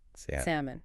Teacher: Many people instinctively want to pronounce that L right in the middle, salmon, but it's completely silent. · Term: silent letters